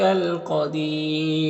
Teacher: الف لام حروف قمری قاف کے شروع میں، تو لام کو پڑھیں گے، الف کو نہیں پڑھیں گے، قاف حروف مستعلیہ میں سے پر پڑھیں گے، اور یہاں پر وقفی کی صورت میں مد عارض وقفی ہوگا، تو اس طرح سے پڑھیں گے۔